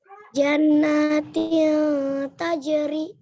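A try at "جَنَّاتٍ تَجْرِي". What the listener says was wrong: Nun bertasydidnya kurang ditahan gunahnya.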